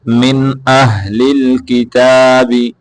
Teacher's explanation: باریک ہا نہیں پڑھنا موٹا ہا ہے